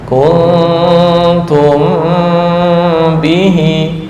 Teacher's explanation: Mim bertemu ba, dengungnya ditahan.